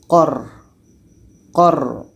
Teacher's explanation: Yang pertama ini memang ro yang berbaris mati. Jadi ro ini sifatnya adalah tawasud. Kita alirkan suara sedikit.